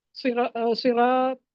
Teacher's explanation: صراط صاد اور طا جو ہے یہ حروف مستعلیہ میں سے ہے اور الف سے پہلے را پر زبر ہے، اس لیے اس کو لمبا پڑھنا ہے، تھوڑا سا مدہ کرنا ہے اس پہ